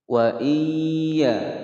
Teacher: nun sukun bertemu ya idgham bi gunnah dimasukkan dan didengungkan selama 2 ketukan. Wa iya, perhatikan di sini ada hamzah bukan ain.